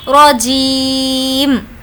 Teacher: اب یہ جو میم کے نیچے زیر ہے یہ ساقط ہو جائے گا۔ اب ہم سمجھیں گے کہ اس پر جزم ہے، میم پر جو کہ لاسٹ لیٹر ہے اس پر ہم کو جزم دینا ہوگا، رجیم، اس طریقے سے یہ زیر ہٹ جائے گا۔